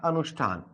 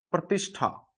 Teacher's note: दंत्य जो सकार है ये तो किसमें बदल जाएगा, मूर्धन्य सकार में